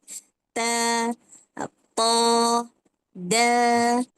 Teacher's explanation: satu tempat keluar dekat hujung lidah dan belakang gigi seri atas